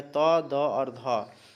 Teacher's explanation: तीनों का उच्चारण स्थान जो है वो दंत ही है